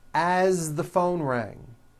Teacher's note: As, you pronounce it with a voiced Z.